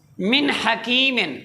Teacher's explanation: جب ہا حروف حلقی کا آ جائے نون ساکن یا تنوین کے بعد تو وہاں ہم نے غنہ نہیں کرنا، اظہار حلقی ہوگا۔